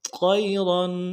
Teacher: طیر، طیر نہیں ہے، طا موٹا کرنا ہے